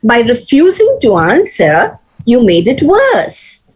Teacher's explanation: the rising tone on answer is not very clear you see there is a pause after answer so it should be a proper rise